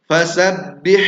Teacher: huruf ha-nya tipis dan bersih. Bukan fasabbih, larinya terlalu tebal, atau fasabbih terlalu kotor.